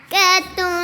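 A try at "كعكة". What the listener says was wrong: کیا عین نہیں ہوتی کیا عین صحیح طرح کاتن اب یہ نا میچ کرنا ہے لحمن گوشت جو ہے یہ ہے لحمن پڑھیں پڑھ لینا لحمن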